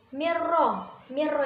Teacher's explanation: Huruf idhom bilahuna itu ada 2, lam ro. Cara membacanya memasukkan huruf depan tanpa berdengung.